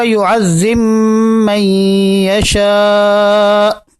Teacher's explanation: با کا ادغام جو ہے وہ میم کے اندر ہوتا ہے